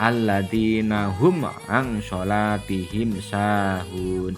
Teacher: Dengan demikian, seluruh huruf hijaiyah selain mim dan ba adalah huruf idhar syafawi. Jadi cara membacanya dengan jelas di bibir dan mulut tertutup tanpa dipanjangkan